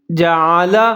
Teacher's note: عین کا خیال رکھنا ہے، اس کو موٹا پڑھنا ہے